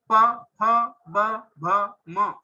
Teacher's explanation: जब हम प फ ब भ म उच्चारण करेंगे तो दोनों ओठ ज्वाइंट होते हैं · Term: ओष्ठ